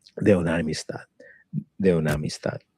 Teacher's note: with a dental T H with a voice there. Very soft.